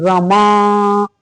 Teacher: अब अगर रमा को हम बहुत देर तक लास्ट वाले को खींच लें तो प्लुत हो जाता है। जैसे हम रमा दूर है, कोई लड़की है और उसको पुकार रहे हैं कि रमा, अगर उसके बड़ा आ को बड़ी देर तक खींचे रहते हैं तो ये बड़ा आ जो है, ये लास्ट वाला बड़ा आ, ये प्लुत हो जाता है।